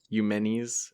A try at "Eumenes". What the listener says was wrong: I think I would pronounce or emphasize the second E, so it's like Eumenes.